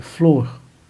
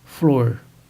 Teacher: a realização do R retroflexo, que é aquele que encontramos numa palavra como flor, pronunciada flor.